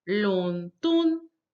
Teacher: And then we have, of course, London, the second and the first tone together